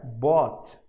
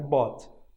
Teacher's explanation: Olha lá, um O bem aberto, né? Bought.